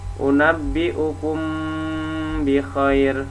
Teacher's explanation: maka dibaca samar di bibir disertai dengan dengung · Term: Ikhfa Syafawi